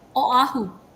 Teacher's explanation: every vowel is pronounced separately